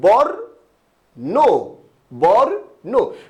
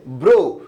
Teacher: নটা পরে উচ্চারিত হয়েছে, রেফটা আগে উচ্চারিত হয়েছে।